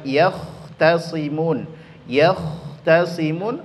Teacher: Maka kha dia adalah huruf yang ketika disebutkan maka mengalir nafas